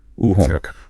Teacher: In American English, this is typically a diphthong, a gliding vowel that starts towards O and moves towards U. Home. British English also uses a diphthong, but it often starts from a more central position, like gliding to U.